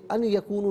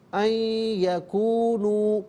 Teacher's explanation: ان یکونو، ملا کر پڑھنے کی صورت میں نون ساکن کو یکونو کی یا کے ساتھ ملائیں گے، یرملون کا قاعدہ یہاں پر اپلائی ہوگا، یا کی آواز کو غننے کے ساتھ ادا کریں گے